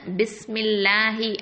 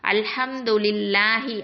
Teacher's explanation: அல்லாஹுக்கு முன்னாடி உள்ள எழுத்துல கெஸ்ரா வந்துருந்துச்சு அப்படின்னு சொன்னா அதை நம்ம வந்து மெல்லினமா உச்சரிக்கணும்